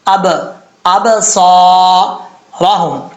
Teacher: इसके बाद है यफू अब हमजा के बाद जो बा है बा साकिन है यहां पर कलकल होगा